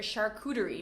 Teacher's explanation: in American English, you might hear charcuterie because we make the T often into a D, or some people think it's an R sound when it comes between two vowels